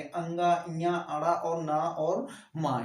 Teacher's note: इनको बोलेंगे तो हमारे नाक से हवा निकलेगी